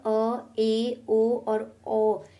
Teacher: जिन स्वरों के उच्चारण में मुख द्वार आधा खुलता है, अर्थात ऐसे स्वर जिनके उच्चारण करते समय हमारा मुख द्वार आधा खुलता हो, वह अर्धविवृत कहलाता है।